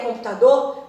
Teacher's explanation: computador tem a última sílaba tônica